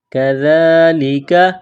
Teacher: ذال کو پڑھتے وقت زبان تھوڑی سی باہر نکالیں گے۔ ذال، ذال کے اوپر کڑا زبر ہے، ایک الف کے لمٹ میں کھینچنا ہے۔